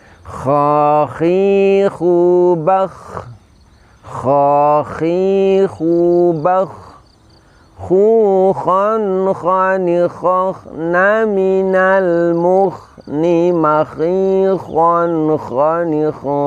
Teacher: Karena pangkal lidah ini terangkat, ini yang disebut dengan sifat isti'la, maka suara terdengar menebal, yaitu suara seakan-akan memenuhi rongga mulut kita.